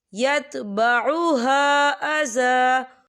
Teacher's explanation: خیر من صدقۃ یتبعها، یا دیکھیں یتبعها، خاللی سے پہلے زبر ہے اور اس پر مد بھی ہے، تو ہم اسے 4 حرکت کے برابر کھینچ کے پڑھیں گے